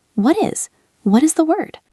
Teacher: It has a clear t sound, but in natural speech, it often becomes a very soft d sound when it links to is.